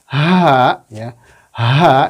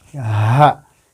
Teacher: huruf H yaitu tempat keluarnya dari pangkal tenggorokan